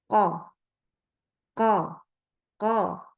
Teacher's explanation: Kan kalau isti'la ini akibatnya isti'la itu apa? Pangkal lidah naik. Akibatnya baca huruf qaf itu tebal.